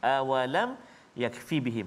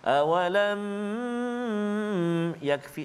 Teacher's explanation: Hukum izhar syafawi iaitu cara bacaannya ialah dijelaskan mim mati tanpa dipanjangkan dengung. Maknanya jelaskan bacaan kita tanpa kita panjangkan bacaan kita ataupun tanpa dengung.